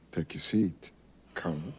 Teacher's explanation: a long pause and then an emphasis on Colonel with a falling tone